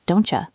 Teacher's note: the T sound in don't actually disappears, so it sounds like don'tcha instead of don't you. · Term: elision